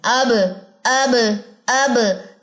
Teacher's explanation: बा बंद होठों के गीले हिस्से पे है